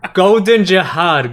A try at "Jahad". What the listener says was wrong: You don't pronounce the D.